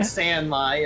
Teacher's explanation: You can just make the A a little lower.